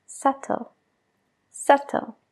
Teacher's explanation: Hay una B justo antes de la T, pero no la pronunciamos.